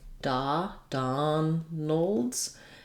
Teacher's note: mick mcdonald's because the stress is on the dawn of donald's letter o in donald says the ah vowel